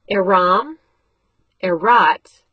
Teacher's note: Aram, erot, and all end in an im or a t. So that a is shortened so that the last syllable will not be long.